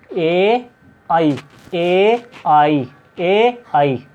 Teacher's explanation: कंठ से लेकर तालु तक बोला जाता है